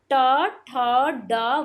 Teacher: वर्ग जो मूर्धा से बोले जाते हैं